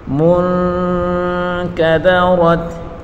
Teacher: وَإِذَا النُّجُومُ، وَإِذَا النُّجُومُ مُنْكَدَرَتْ، میم کو نون کے ساتھ ملا کر پڑھیں گے اور نون ساکن ہے، نون ساکن کے بعد اخفا کا حرف کاف آ رہا ہے تو اس نون پر ہم گنہ کریں گے۔ منکدرت، کاف دال را تینوں کے اوپر بڑی حرکت ہے، بغیر کھینچے پڑھیں گے۔